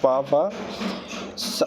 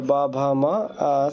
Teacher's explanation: पा वर्ग में प फ अघोष हो गया और ब भ म सघोष हो गया